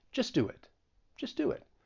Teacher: the sound that we're going to add is a slight w to the end of do and when we add that slight w well then we can link it with the vowel sound in it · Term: intrusion